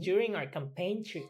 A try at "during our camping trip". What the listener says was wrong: Our, don't forget, our. Campaign trip.